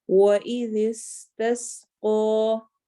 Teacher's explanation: زبان آپ کی ایک ہی وقت میں نرمی سے سختی کی طرف جائے گی. وَإِذِ، ذال نرم اور پھر سین سخت سیٹی کی آواز کے ساتھ. · وَإِذِ اسْتَسْقَى، وَإِذِ، ذال نرم ہے سین سخت ہے. ذال نرم حروف میں سے ہے، سین سیٹی والے حروف میں سے ہے.